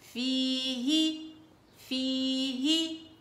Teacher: فا كسرة يا سكون في، ها كسرة هي فيه، وهذه الياء المدية لأنه الياء إذا سبقت بكسر مدية على طول الخط